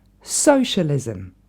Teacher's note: Et l'accent tonique tombe bien sur la première syllabe.